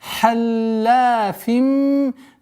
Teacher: полноценный у нас идгам, ассимиляция с полноценной назализацией в размере двухогласовок удерживаем